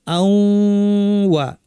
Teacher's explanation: আপনারা শিক্ষক বিশেষত ছোট বাচ্চাদেরকে পড়ানোর সময় শুরুতেই ইদগাম ইখফা নিয়মগুলো নাম বললে তাদের কাছে কঠিন লাগবে, সহজ করে বলবেন যে আন ওয়া আসলে আমরা কি পড়ি আউ ওয়া। আউ বলার সময় নাক থেকে গুন্না করি, একটু সময় দিয়ে ওয়া বলার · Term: গুন্না সহ ইদগাম